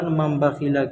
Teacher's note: تنوین یا نون ساکن کے بعد با آئے تو نون کو میم سے بدل کر غنہ اور اخفا کے ساتھ پڑھیں گے، اس کو اقلاب کہتے ہیں۔